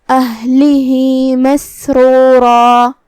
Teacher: ہا کے نیچے کھڑا زبر ہے، یہاں حکم ہے مد صلہ صغرا، ہم اپنی آواز 2 مد کے برابر لمبی کریں گے · ہا کو ہم ظاہر کریں گے اور اسے حلق کے نیچے والے حصے سے ادا کریں گے